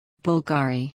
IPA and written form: ˈbʊlɡəri (BULGARI)